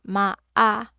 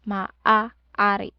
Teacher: So they have maa Stop there, glottal stop.